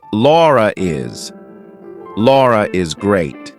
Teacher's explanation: If I have to link my name to something else that's a vowel, I have to put an R in there. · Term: intrusive R